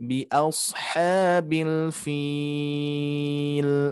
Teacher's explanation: kurang lebih memanjangkannya mad aridnya di 4 harokat